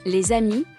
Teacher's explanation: la s final es muda pero s se pronuncia como Z cuando va seguida de una palabra que comienza con una vocal